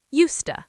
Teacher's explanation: And the D is silent. You don't say used to. You just blend it.